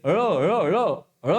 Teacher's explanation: ळ म्हणत असतानी आपली जीभ मुरट्टे आणि पार्श्व भागातून हवा बाहेर निघते म्हणजे आपली जीभ ही मुरद्याला लागते म्हणून ळ हा दंतेमध्ये